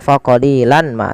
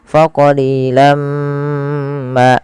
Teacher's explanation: Maka jangan lagi dibaca faqalilan ma, tapi langsung masukkan ke mim karena ia bacaan idgham bi gunnah. Kemudian setelah kita masukkan tanwinnya ke mim ditahan faqalilam ma. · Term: idgham bighunah